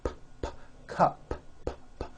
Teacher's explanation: Take the word cup. Cup. It ends with an unvoiced P.